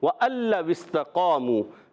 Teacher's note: نون لام میں مل جائے گا. یہاں قاعدہ ہوگا ادغام بلا غنہ · واو پر زبر ہے، حرکت ہے، حرکت کو بغیر کھینچے ادا کرتے ہیں اور گول ہو جائیں گے واو میں